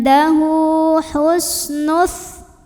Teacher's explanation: Hu mad silah qasirah karena ada hak domir yang diapit 2 huruf hidup dan huruf setelahnya bukan hamzah ya. Maka hak domirnya ini kita panjangkan 2 harokat saja.